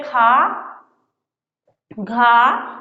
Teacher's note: दूसरा और चौथे वर्ण का उच्चारण हो रहा है उसमें हमारे मुख से अधिक वायु बाहर निकल रही है। करें खा, घा, तो हमारे मुख से अधिक वायु बाहर निकल रही।